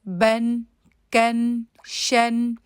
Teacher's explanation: جو اینڈ میں نون کی آواز آتی ہے، اس کو آپ نے زیادہ لمبا نہیں کرنا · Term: تنوین